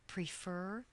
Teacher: prefer stress is on the second syllable